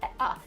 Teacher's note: Another feature that we see in DC, similar to New York, is the raised thought cloth vowel, ah. This is a new feature in DC, and we think it's part of a pattern of DC varieties becoming more like northern cities as opposed to the south.